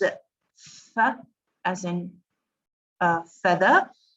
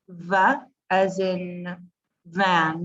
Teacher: when the sound is made, when it is vibrated, when it is voiced, it becomes v